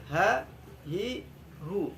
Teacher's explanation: sesuai dengan makhrajnya, yaitu di pangkal tenggorokan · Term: huruf ha besar